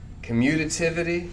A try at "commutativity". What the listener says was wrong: So you're missing the T.